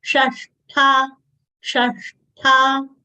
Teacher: we should exhale by saying tha and it should not come out as t.